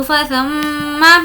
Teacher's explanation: میم پر تشدید ہے غنہ کریں گے